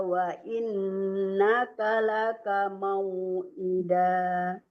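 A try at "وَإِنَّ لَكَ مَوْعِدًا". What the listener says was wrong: Wa inna laka, wa innaka laka. Tak pakai ka satu ya. Tadi kayaknya dua wa innaka laka.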